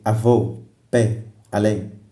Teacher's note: A sílaba tônica está na última sílaba da palavra. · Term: agudas